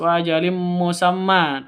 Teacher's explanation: tanwin bertemu dengan mim. Cara bacanya masuk ke mim disertai dengung karena idgham bi gunnah